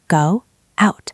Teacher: If you don't say the W, you have to stop your voice. Go out. That sounds robotic.